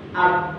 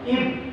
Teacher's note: Ab, nah, ada sifat qalqalah. Ib, suaranya tertahan, nafasnya tertahan, terus ada pantulan, itu sifat qalqalah